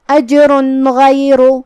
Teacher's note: پھر حرف الغین آتا ہے کلمت غیر میں، تو یہاں حکم ہوا اظہار، ہم یہ تنوین کو ظاہر کریں گے اور نون ساکن پڑھیں گے اور بغیر غنہ سے یہ حکم کو ادا کریں گے. اجر غیر، کلمت غیر میں یہاں حرف الغین ہے، غین کو ہم حلق کے اوپر والے حصے سے ادا کریں گے، جو کہ وہ حروف تفخیم میں سے ہے، تو ہمیں اسے تفخیم سے مطلب بھاری آواز میں پڑھنا ہے.